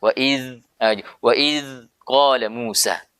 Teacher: Huruf dzal ketika dibaca harus keluar suara, harus mengalir suara.